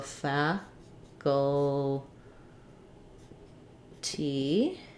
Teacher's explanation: We also, again, have first syllable stress